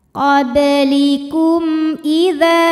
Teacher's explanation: Lalu ada hukum idhar syafawi. Karena mim sukun menghadapi huruf selain mim dan ba, yaitu huruf hamzah, maka mim sukun dibunyikan dengan jelas.